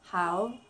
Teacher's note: And how is third tone, colored blue on my pleco.